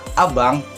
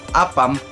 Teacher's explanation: vokal pusat rendah tak bundar. Cara pelafalannya dengan jatuhkan rahang bawah, gigi atas dan gigi bawah tidak ditutup oleh bibir, lidah rata dan menyentuh gigi bawah. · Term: vokal A